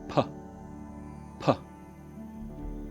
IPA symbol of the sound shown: p